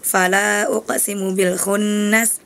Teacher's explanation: Fala uqsimu bil khunnas itu nun gunanya ditahan dua haraka. Kemudian di ayat ke-16-nya kurang ditahan.